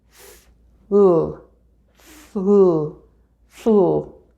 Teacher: making the F sound by placing your upper teeth onto your lower lip and breathing through the gap between your teeth and your lips